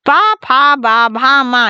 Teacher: बा अंतस्थ नहीं है, ये ओष्ठ्य व्यंजन ध्वनि है। पा फा बा भा मा ये ओष्ठ्य व्यंजन ध्वनि है